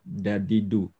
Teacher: D-nya beda lagi, ya. Bukan makhrajnya di pangkal gigi seri atas, tapi dia ke langit-langit